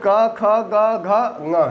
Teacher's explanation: तो घ का सवर्णी क ख ग घ ङ है, क्योंकि सब कंठ से उच्चरित होते हैं।